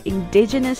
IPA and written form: ɪnˈdɪdʒənəs (indigenous)